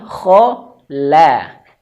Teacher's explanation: ada huruf ko dan qof yang tebal. Di tengah-tengahnya ada huruf lam yang tipis. Maka hati-hati sekali di sini jangan sampai lamnya terbawa tebal.